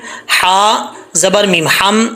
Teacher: یہ ہا باریک ہے، اس کا تعلق حلق سے ہے، سینے سے نہیں ہے